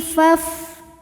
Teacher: Wa akhi faf nah ini depan fa fathah ada alif tapi alifnya bukan pemanjang ya jadi ini hamzah washal hamzah washal kalau di tengah tidak dibaca jadi fa tetap pendek. Faf ruq huruf ra dihukumi dengan ra yang dibaca secara tafkhim karena barisnya dhammah maka dibacanya ditebalkan.